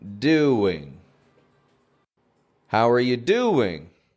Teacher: No W spelling in there, but I'm hearing a W sound.